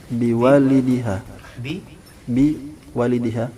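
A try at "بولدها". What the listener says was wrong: Itu bi waladiha. Iya, kalau walid, ini walad.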